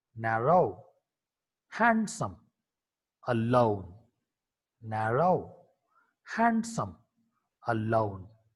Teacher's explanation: N is a voiced alveolar nasal consonant.